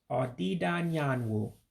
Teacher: you're going to drop the a in anyangu so it becomes audi don yanwu for sunset and i'll say